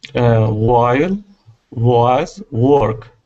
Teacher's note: W in this sense is going to equal an oo sound. Okay, so when you see a W, I don't want you to think of a W and pronounce it like a V.